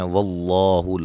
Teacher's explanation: لفظ اللہ کے لام کو موٹا ادا کریں گے، اس سے پہلے زبر ہے